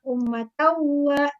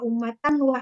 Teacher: Cara membacanya dimasukkan tanwinnya ke dalam waw karena idgham itu artinya memasukkan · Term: idgham bigunnah